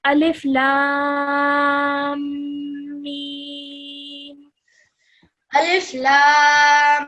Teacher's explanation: Make sure that when you're joining the lam and the meme together, that you hold the meme gunna sound in your nose for around 2 seconds